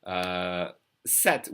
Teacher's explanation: we don't hear the P at all. It's silent.